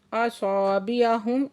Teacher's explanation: असाबिअहुम मीम साकिन है, इजहार शवी हो रहा है